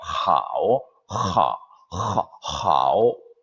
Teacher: 그냥 그 입 안에서만 그냥 하오가 아니고 우리 히읗처럼 사실은 목구멍을 울리면서 나오는 하오가 정확한 중국인들의 발음이에요. 하오, 하오 이렇게 하는 것이 중국인 발음에 근접하는 H 발음이에요.